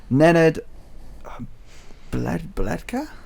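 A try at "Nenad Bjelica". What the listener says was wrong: I think it's Lecker. I'm sure the B is silent.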